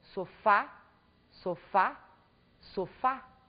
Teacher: na palavra sofá Nós também temos a última sílaba como a sílaba mais forte desta palavra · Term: oxítonas